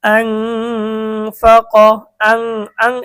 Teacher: ফা আসছে, তা আমাদেরকে গুণনা সহ অস্পষ্ট পড়তে হবে। আং ফা ক, আং আং, এটাকে অস্পষ্ট গুণনা কেন বলে, কারণ ইকফার গুণনাটা নাকের থেকে বের হয়, যার কারণে এটাকে অস্পষ্ট বলা হয়।